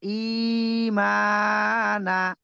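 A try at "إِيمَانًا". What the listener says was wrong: না টান হবে।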